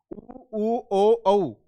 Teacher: जिन स्वरों के उच्चारण में ओष्ठों का आकार, आपके होठों का आकार गोलाकार हो जाए उन्हें आप कहेंगे वृत्ताकार या वर्तमुखी स्वर। उ ओ औ इनके उच्चारण में ओष्ठों का आकार गोलाकार हो जाता है